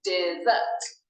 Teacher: Dessert is a 2-syllable word with the stress on the 2nd syllable.